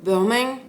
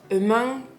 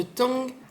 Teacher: Le N tilde en fin de mot, comme dans par exemple Burmang, ou alors Emang, ou alors de Tong, là, vous pouvez entendre comme si en fait il y avait un petit G